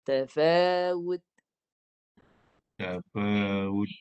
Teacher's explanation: Dia kena ada bunyi ta, bunyi nafas tu. Tu letak pada lidah hujung pangkal gigi atas dan keluarkan bunyi ta yang dimatikan tu. Mati dengan nafas. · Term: ta mati